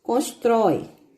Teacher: Aqui no encontro vocálico, eu vou ter uma vogal pronunciada com mais força e depois dela, então, vai vir uma semivogal. Vogal mais forte por mais fraco, então eu vou ter a ordem decrescente.